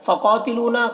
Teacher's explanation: قاف کو پر پڑھنا ہے، یہ حروف مستعلیہ میں سے، اور یہاں پر یا مدہ ہے، الف مدہ ہے۔